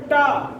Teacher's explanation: बोलिए टा। टा बोलने पे देखिए जीभ पीछे को मुड़ जाती है, टा मुड़ती है। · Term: मूर्धा